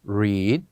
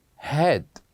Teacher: has the shorter version when we say head read head so same letters but they are pronounced differently as the first one is longer than the other one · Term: longer version